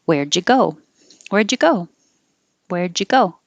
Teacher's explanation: Where'd ya? So the D and the Y make a J.